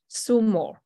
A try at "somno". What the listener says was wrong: So it's SOM, right? S-O-M is som. It's som or somno.